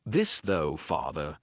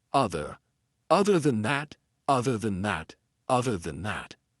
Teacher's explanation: vocal cords are going to vibrate when you aspirate the sound. So that's the voiced TH.